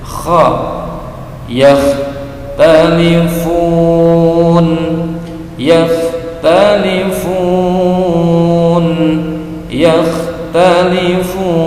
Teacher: Huruf kha ini berdahak sedikit ya, jangan terlalu banyak.